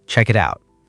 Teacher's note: The K flows into the I. The T flows into the OU.